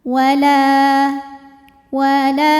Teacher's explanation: adalah Mad thiiiri sebab ada Alif yang sebelumnya didahului baris fathah maka cara bacanya huruf lam kita panjangkan dua harakat